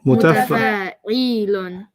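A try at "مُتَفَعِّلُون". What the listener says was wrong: The E is too long. There's no ya there.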